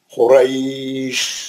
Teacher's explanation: या साकिन से पहले जो है रा पे जबर है, ये लीन हो गया, खुरैश। हम क्या करें?